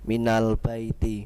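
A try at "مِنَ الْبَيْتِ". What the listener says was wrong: Ba-nya jangan ditekan. Ingat baik-baik, ba-nya jangan ditekan, jangan ba. Jangan begitu, ba. Biasa saja.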